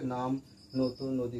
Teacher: নাম বলার সময় শুরুতেই দেখো আগে দাঁতে জিভ ঠেকছে, তারপরে নাম উচ্চারণ হচ্ছে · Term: দন্তন্য